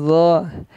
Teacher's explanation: terdapat sifat istilah dan its back maka dia terdengar lebih tebal tempatnya Sama ada di ujung lidah bertemu dengan gigi seri yang atas